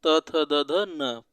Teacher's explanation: जब पांचों का उच्चारण करते हैं तो जीभ जो है दांत को स्पर्श करती है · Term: त वर्ग